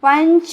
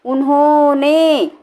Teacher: अनुस्वार में तो नाक से ज़्यादा सांस निकलती है, मुंह से कम निकलता है।